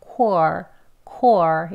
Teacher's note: 그래서 W 소리는 빼고 발음하겠습니다. 그냥 크 소리하고 or 하는 소리를 연결해서 core, core 이렇게 해요.